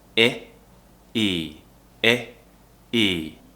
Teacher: two sounds Oh II a E the most noticeable difference is the second sound is a long vowel and I smile a little bit more